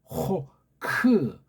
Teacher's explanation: 목구멍 안쪽에서 나오는 키읔 소리입니다